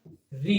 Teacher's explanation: ऋ का उच्चारण किससे किया जाता है आपका मुर्धा से किया जाता है